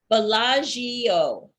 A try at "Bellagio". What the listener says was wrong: You don't hear the I. Bellagio. Bellagio. 3.